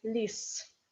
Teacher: Z in the end of the word becomes S.